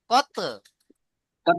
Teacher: ধাক্কা দিতে হবে তকে, কারণ ত এর উপরে সাকিন এসছে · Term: কলকলা